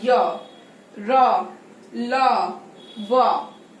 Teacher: अंतस व्यंजन में वो पूरी तरह से स्पर्श नहीं करती। यही कारण है कि इसको हम अर्ध स्वर भी कहते हैं।